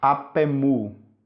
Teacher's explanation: a vogal existente que existia ali, ela foi retirada para facilitar a ligação entre as palavras e a pronúncia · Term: elisão